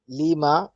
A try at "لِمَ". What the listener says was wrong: نہیں، جلدی سے پڑھیے اس کو، لیما نہیں.